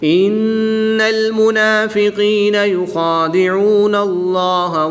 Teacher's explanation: لام سے پہلے نون پر زبر ہے تو اس لیے اس لام کو ہم پر یعنی موٹا پڑھیں گے۔